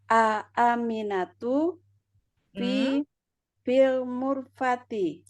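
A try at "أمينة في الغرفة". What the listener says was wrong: Bukan mu. Bukan mim. Mim. Iya, lain fil ghurfati. Aminatu fil ghurfati.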